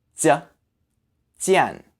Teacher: The J sound, just like the Z sound, is a bit more explosive than the English equivalent, which would be like the G in Jeep.